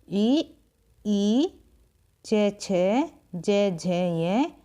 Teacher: ई च, छ, ज, झ, ये तालव्य से उच्चारित होते हैं।